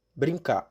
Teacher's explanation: Grande parte dos habitantes da capital paulista quase não pronuncia o R, especialmente no final de verbos. Brincar, por exemplo, é pronunciado quase como brincar.